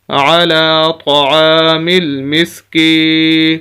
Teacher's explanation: کاف کو ہم نے یا کے ساتھ ملایا اور کاف کو ہم لمبا کر رہے ہیں۔ وجہ اس کی یہ ہے کہ یہ یا مدہ ہے، جیسے الف مدہ کے بارے میں بتایا، یہاں پر یا مدہ آ گئی کہ ایسی یا ساکن جس کے پچھلے لفظ کے نیچے زیر ہو۔